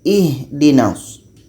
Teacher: rakhawah ini suaranya kita mesti alirkan